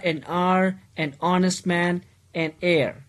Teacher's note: begin with a vowel sound as the initial consonant h is not pronounced. So, it means that the h here is silent word.